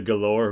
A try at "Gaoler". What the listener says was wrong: You're saying Galore, like it's Gowler. I'm not saying it right either. I don't think, but it's definitely Gaoler. Like that's how it's spelled.